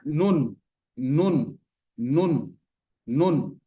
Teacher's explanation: menyentuh bagian gusi namanya ya gusi atau tempat tumbuh gigi seri bagian atas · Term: huruf nun